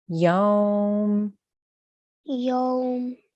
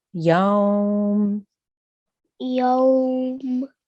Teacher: make sure we have a slight extension there because of the wawlin